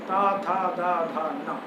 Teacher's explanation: तवर्ग में जो पांचवा वर्ण न है उसका उच्चारण नाक और मुंह दोनों से होने के कारण उसको हम अनुनासिक कहेंगे